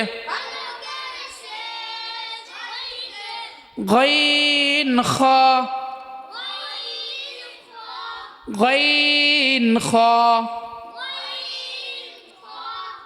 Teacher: তিন নম্বর মাখরাজ হলকের শেষ হইতে গইন খ